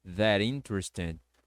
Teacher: Você pode conectar o that com interesting, ficando that interesting. Ou seja, o T do that vai ficar com som de R para poder juntar